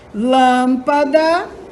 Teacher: O lã é a sílaba mais forte. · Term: sílaba tônica